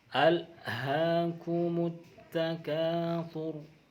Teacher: Al bertemu ha itu dibaca jelas. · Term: idhar qamariyah